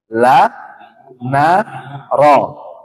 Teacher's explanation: ujung lidah bertemu dengan gusi